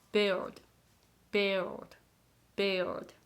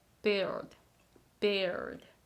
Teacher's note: so you've tried pronounce L but you didn't have the time so the tongue didn't touch to the L position